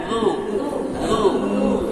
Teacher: Lu itu ujung lidah dengan ujung gigi seri atas.